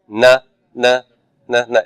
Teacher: So nu is a dental, but it's a nasal dental. You are not only placing your tongue here, but you're forcing all the air out of the nasal cavity.